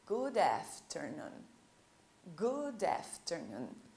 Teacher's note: Você percebeu que eu juntei o som do D do good e o A do afternoon?